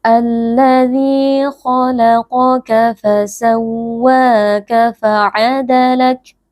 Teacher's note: di sini ada mad tabi'i yaitu karena ada ya sukun yang sebelumnya berharokat kasrah, dibaca panjang 2 harokat